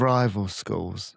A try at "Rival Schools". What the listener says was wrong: Don't pronounce it like an American. Rival Schools. You're not. Don't do the American intonation thing. That's a cunty way to say it.